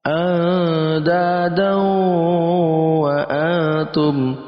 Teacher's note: andadaw wa antum andadaw, ya, ada tanwin bertemu dengan wawu masuk dalam kategori idgham bi gunnah. Kita masukkan tanwin ke dalam wawu lalu kita dengungkan.